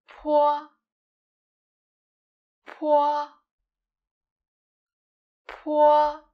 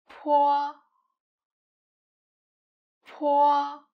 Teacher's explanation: This initial is 坡, 坡, 坡. Different from 波, 坡 is aspirated, which means that you can feel a strong puff of air released from your mouth. 坡, 坡. We can put a piece of paper in front of us to help us feel that po is aspirated.